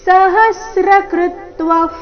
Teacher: ವಿಸರ್ಗದ ಉಚ್ಚಾರಣೆ ಅರ್ಧ ಫರೀತಿ